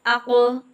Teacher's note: حروف لحویہ زبان کی جڑ اور اس کے مقابل تالو کے نرم حصے سے نکلتا ہے۔ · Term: قوف